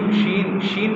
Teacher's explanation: জিহ্বার মধ্যখান মধ্যখানের উপরে যে স্থান আছে তালু সেই তালুর সাথে লেগে যাবে হ্যাঁ জিম শিনশিন এটা কিন্তু খুব শক্ত করে উচ্চারণ করা যাবে